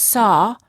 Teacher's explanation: And aw are very similar sounds, except for the aw, the lips are a little bit more oval in shape and the tongue is slightly tense. However, in many parts of the United States, the and aw are pronounced the same.